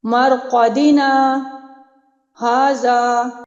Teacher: آگے سورہ یاسین کے جو 2 کلمات ہیں، مرقدنا ھذا، ایسے نہیں کرنا مرقدنا ھذا، یہاں پہ سکتہ واجب ہو رہا ہے، نہیں، آپ نے ادائیگی پراپر کرنی ہے، باقاعدہ مرقدنا کے بعد 2-3 سیکنڈ کے لیے رکیں گے، سکتہ ہوگا، یعنی آپ نے سانس نہیں توڑنا لیکن تھوڑی دیر کے لیے آپ ٹھہریں گے 2 سے 3 سیکنڈ کے لیے، پھر اگلا کلمہ آپ ادا کریں گے، مرقدنا ھذا۔